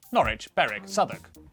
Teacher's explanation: w at the start of the final syllable is silent